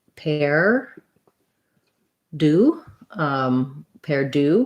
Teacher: Perdue with second syllable stress